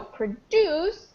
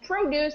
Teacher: the stress changes. So produce, the verb, has it on the second syllable, and produce has it on the first